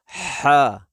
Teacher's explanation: یہ ہا ادا ہوگا آپ کے گلے کا درمیان سے یہ ہا ادا ہوگی، جیسے ہا، جیسے ہم سانس لیتے ہیں نا، اسی طرح یہ بھی ایسے ہی ادا ہوگا جیسے ہا۔